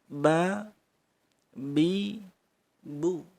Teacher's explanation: Untuk makhraj ba, ngatupnya bibir tidak kaku atau tidak ditekan ya, lemes. Ba, bi, bu.